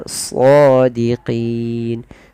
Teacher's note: tebalkan sodnya karena dia bukan so ya, shadiqin. Qin ada bacaan mad arid lis sukun, yang dengan mematikan suara nun kita, nunnya kita matikan menjadi nun yang sukun.